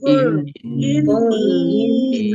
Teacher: nun tasdid dibaca guna atau mendengung, ditahan biar tampak mendengungnya